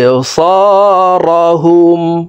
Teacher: বা কলকলার হরফ নিচের দিকে ধাবিত করে ধাক্কা দিয়ে উচ্চারণ করব